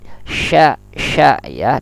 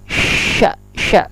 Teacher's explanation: sya huruf lisan tengah lidah berjauhan, saling berjauhan dengan langit